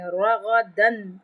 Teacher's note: را پہ غائن پہ تفخیم کریں گے یعنی موٹا پڑھیں گے